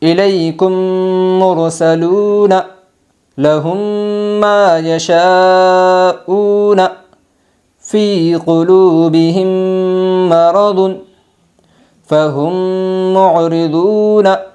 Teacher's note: میم ساکن کے بعد میم آئی ہے، اس لیے میم کو میم سے ملا کر غنہ کے ساتھ پڑھے گے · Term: ادغام شفوی